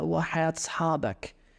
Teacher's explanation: The joining together of vowels there, وحياة أصحابك, is very Palestinian here.